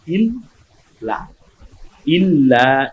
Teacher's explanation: ইল্লা দুইবার লামটা উচ্চারণ হয়, ইল্লা, ইল্লা একালিপ আবার টানবো, কারণ জবরের পরে খালি আলিফ আমরা পেয়ে গেছি।